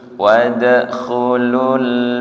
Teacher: lam sukun tidak mantul nggih tahan satu harakat · jim sama dengan syin tempat keluarnya tengah lidah